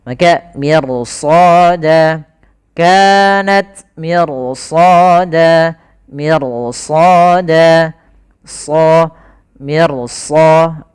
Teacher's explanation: Kenapa ro-nya dibaca tebal kok padahal huruf ro sebelumnya tipis? Karena datang setelah huruf ro-nya ada huruf isti'la. Maka ro-nya menjadi tebal. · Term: ra tafkhim